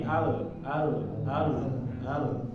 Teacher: untuk huruf lam semuanya dibaca tipis jangan sampai membacanya tebal